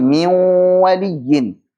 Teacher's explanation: Miu sudah jadi waw makhrajnya, tapi kok masih bawa-bawa gunnah yang keluar dari al-khusyum, maka namanya idgham naqis.